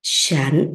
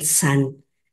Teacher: Ahí disculpen mi pronunciación, está escrito con SH, de acuerdo a mi maestra del chino, la punta de la lengua va hacia arriba, pero yo he escuchado a los maestros que no pronuncian así, sino pronuncian san.